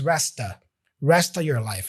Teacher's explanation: So he doesn't really say rest of, but resta. The of gets reduced to a sound, a schwa sound.